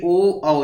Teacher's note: इसमें ओठ का आकार बनता है और आवाज गले से आती है, यानी कंठ से आती है, अर्थात इसका उच्चारण स्थान कंठोष्ठ हो जाएगा।